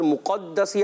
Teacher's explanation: مقدسی آیا تو میم پر تو ہونٹ گول ہوں گے